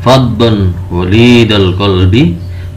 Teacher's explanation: Faddun dibaca terang, jelas. Faddun tidak boleh samar, tidak boleh berdengung, tapi harus terang. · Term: idhar